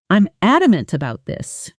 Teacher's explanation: Firm, flat, no rising pitch. · When someone says, I'm adamant about this, listen to how the voice rises slightly on adamant and stays firm, almost flat, no uncertainty in the pitch.